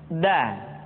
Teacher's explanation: Da diucapkan dengan menyentuhkan ujung lidah kita dengan bagian gusi-gusi dua gigi seri bagian atas. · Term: huruf da